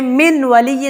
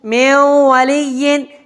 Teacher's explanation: نون کو واو میں داخل کر دیتا ہوں، من ولی، لیکن غنہ بھی کرتا ہوں، ناک میں آواز بھی لے کے جاتا ہوں، تو یہاں پر ادغام بھی ہوتا ہے اور غنہ بھی ہوتا ہے۔